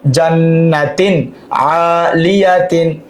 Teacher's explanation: তানবিনের পর আইন থাকার কারণে ইজহার, গুন্না ছাড়া স্পষ্ট। জান্নাতিন, তিন আইন আলিফ জবর আ, লাম জের লি, আলি, ইয়া জবর ইয়া, আলিয়া, তা দুই জের 3, আলিয়াতিন, জান্নাতিন, আলিয়াতিন।